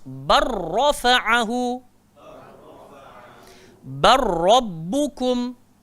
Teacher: Jangan lagi bunyi lam tu. Baller, tak betul. Dia masuk dalam ra terus.